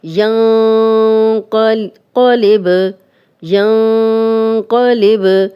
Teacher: ینقلب، ینقلب، نون ساکن آگے قوف ہو گیا تو اکفا کا قاعدہ ہے اور نون کی آواز کو تھوڑا چھپا کر غنہ کریں گے